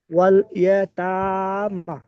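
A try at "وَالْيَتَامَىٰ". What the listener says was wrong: মিমটাও খাড়া যাবার, তাটা যেমন খাড়া যাবার টান দিচ্ছেন, মিমটাও এরকম টান দিয়ে পড়তে হবে। খাড়া যাবার একই, দুটো তো দেখতে একই, তাহলে একই টান হবে।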